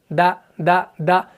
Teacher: یہ ایسا نہیں ہو رہا تھا تھا تھا تھا تھا، تو یہ ایئر فلو کو پاس نہیں کرنا ہے بلکہ دا دا دا دا، بس ایئر فلو کٹ ہو رہا ہے، سانس جاری نہیں رہتا ہے